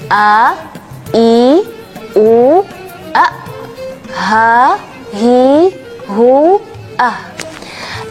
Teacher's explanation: kita merasa banget ya huruf-huruf ini keluar dari bagian tenggorokan, bagian akhir tenggorokan atau bawah tenggorokan